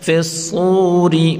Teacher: فا کو صاد کے ساتھ ملا کر پڑھیں گے، صاد کو پر پڑھیں گے اور واو مدہ ہے ایک مقدار کھینچ کر پڑھیں گے. فی الصور اور را کو باریک پڑھیں گے.